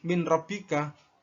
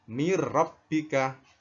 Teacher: Cuma nunnya lebur. Nunnya ini hilang. Langsung ke ra. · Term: idgham bila gunnah